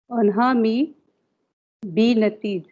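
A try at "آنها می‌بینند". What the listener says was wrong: अनहा मी बीनंद, अंध की आवाज है ना, ये अंध की, ई नहीं है, ये अंध है।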